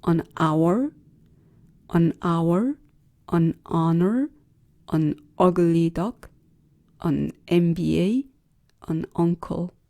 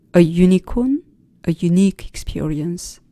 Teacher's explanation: uncle, ugly 같은 단어들은 모음으로 시작되죠. 이에 반해서 unit, unicorn 같은 단어들은 반모음으로 시작되죠.